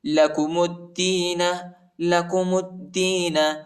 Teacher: میم کو دال کے ساتھ ملائیں گے، الف اور لام نہیں پڑھا جاتا، الف اور لام پر حرکت نہیں.